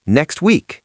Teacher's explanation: so the brain being lazy and efficient says delete the T. It becomes next week.